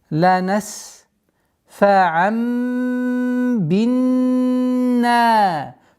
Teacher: То есть два раза подряд назализация полноценным образом.